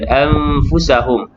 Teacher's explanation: nun mati bertemu dengan fa, ikhfa hakiki dengung.